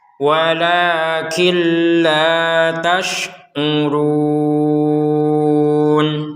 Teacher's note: kalau digabungkan maka nun sukun ini dimasukkan ke huruf lam tanpa dengungan.